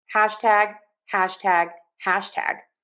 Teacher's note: If you were going to say hashtag stress syllable number one, hash unstressed tag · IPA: /ˈhæʃ.tæɡ/